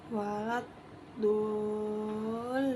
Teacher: mad tabi'i bertemu tasydid panjangnya 6 harokat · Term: mad lazim mutaqal kalimi